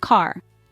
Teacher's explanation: in American English the r is pronounced clearly as in the word car